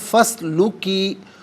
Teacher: اسے اسلوکی کے سین ساکن کے ساتھ ملائیں گے، درمیان میں سے الف یعنی حمزہ کو حذف کیا جائے گا. اسے ہم پڑھیں گے فسلوکی سبولا ربی کی، ربی کی، را پر زبر ہے، را کو پر پڑھیں گے، با مشدد ہے، جماؤں کے ساتھ پڑھیں گے اور رب کی پڑھا جائے گا.